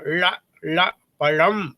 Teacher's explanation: பணம் வருகின்ற பொழுது அந்த பழத்துக்கு வர லா போடும்போது நாக்கை மடிச்சிடணும், ழ, ழ, பழம் அப்படின்னு சொல்லி.